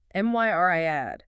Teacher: 3 syllables. Stress on the first.